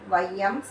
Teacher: ஐகாரம் சொல்லின் முதலில் வரும்போது 1.5 மாத்திரை அளவில் ஒலிக்கும் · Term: ஐகார குறுக்கம்